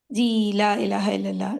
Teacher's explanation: اب یہ دو کلمات میں ہے اور ہم مد لیٹر کو 4 to 5 کاؤنٹس دیں گے. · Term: مد جائز منفصل